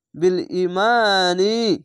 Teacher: মিম জাবারের পাশে খালি আলিফ এক আলিফ টেনে পড়বেন